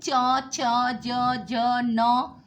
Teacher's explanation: चवर्ग तालु यानी जीभ थोड़ी सी उठती है, इसमें च, छ, ज, न।